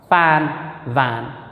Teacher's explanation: lower lip touching to the upper teeth